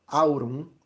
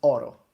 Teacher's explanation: So you see, we dropped the diphthong and we made it easier.